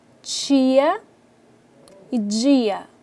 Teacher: é aquele som que apresenta características tanto de oclusivas quanto de fricativa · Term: Consoantes africadas